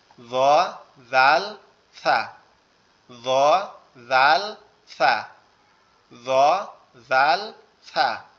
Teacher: 13 নম্বর মাখরাজ, জিহ্বার আগা সামনের দুই দাঁতের আগার সঙ্গে, য জাল সা,